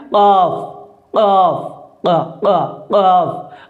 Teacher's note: اب زبان کی جڑ اٹھ کر جب تالو کے نرم حصے سے لگتی ہے تب جا کر قاف ادا ہوتا ہے۔